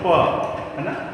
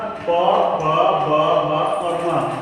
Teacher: जैसे बोलो प, है ना, तो प, जब हम प बोलते हैं तो हमारे दोनों ओठ क्या होते हैं, चिपक जाते हैं।